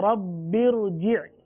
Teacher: तो कायदे में इसी चीज़ को बयान किया गया है कि रा साकिन से पहले आरजी जेर हो तो भी रा को पुर पढ़ेंगे